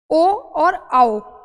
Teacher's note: जब हम ओ और औ को बोलते हैं तो कंठ और ओष्ठ यानी कि हमारे कंठ की और हमारे होठों की ज़रूरत पड़ती है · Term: कंठ ओष्ठ